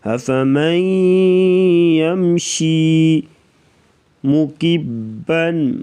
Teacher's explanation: يَمْشِي مُكِبًّا عَلَى وَجْهِهِ أَهْدَى أَمَّنْ يَمْشِي سَوِيًّا عَلَى صِرَاطٍ مُسْتَقِيمٍ. افمن من نون نہیں پڑھیں گے، میم کو یا کے ساتھ ملائیں گے، ادغام کر کے پڑھیں گے، ادغام مع الغنہ یعنی غنے کے ساتھ پڑھیں گے